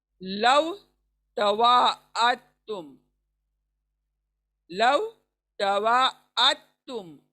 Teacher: दाल छूट रहा है यहाँ पर और तुम पढ़ रहे हैं हम लोग।